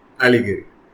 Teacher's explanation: pronounced with the emphasis on the first syllable, allegory. This term appeared in the June 2014 UGC NET examination and falls under our Poetic Devices and Forms cluster.